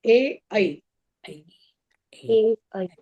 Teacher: इसका सूत्र है एत कंठ तालु ए ऐ जीभ आपकी तालु में भी सटेगी और कंठ से भी उच्चारण होगा।